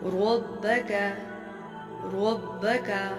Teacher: جیسے ہمارے پاس زبر کی مثال ہے ربک، ربک، را کے اوپر زبر ہے، را موٹی پڑی جائے گی یعنی منہ بھر کے